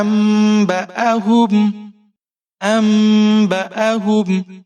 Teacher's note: فَلَمَّا، حمزہ کے اوپر زبر ہے، نون ساکن ہے، حمزہ کو نون کے ساتھ ملائیں گے، لیکن اقلاب کی وجہ سے میم کی آواز آئے گی۔ با کے اوپر زبر ہے بغیر کھینچے پڑھنا ہے، حمزہ کے اوپر زبر ہے بغیر کھینچے پڑھیں گے، ہا کے اوپر پیش ہے بغیر کھینچے پڑھنا ہے، میم ساکن ہے، میم کا اظہار ہوگا۔